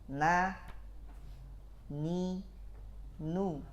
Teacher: ujung lidah kita tempel dulu digusi nah jangan ditempel di Pangkal gigi atas ya Nah bisa juga · Ketika mengucapkan dia satu harakat, ada khayshum. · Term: huruf nun